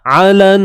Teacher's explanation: huruf ain sempitkan pada bahagian kerongkong. Ni tengah kerongkong kita.